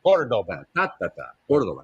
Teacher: Córdoba. The accent is on the first syllable.